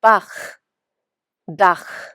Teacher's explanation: The hard ch from the back of the throat.